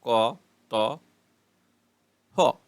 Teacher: ধ্বনি কন্ঠনালীতে কম্পন হয় না